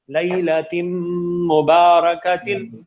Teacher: ادغام بولتے ہیں کہ پہلے والے کی ساؤنڈ کو دوسرے میں داخل کر دینا. اب لیلتن جو ہے اس میں نون ساکن کی ساؤنڈ تھی, اس کو آپ نے میم میں داخل کر دیا, مکمل ادغام ہے, نون باقی ہی نہیں رہے گا, اسی لیے ہم اس کو بولتے ہیں مکمل کامل ادغام, نون کی آواز باقی ہی نہیں رہتی.